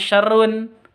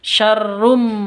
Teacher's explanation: tanwin bertemu dengan mim cara bacanya masuk ke mim Rum seperti itu bukan syarrun tapi syarrum mingkem Nah masuk ke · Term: Idam Bun